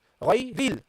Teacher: You don't read it. You drop hamzatul wasl, and you go from the letter before, ri, to the letter after, the lam with the sukun.